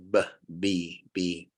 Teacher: number two lip sounds and the B is a lip sound both of your lips top and bottom have to come together to say b